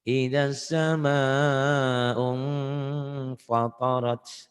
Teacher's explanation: nun mati tanwinnya ketemu fa maka bunyi m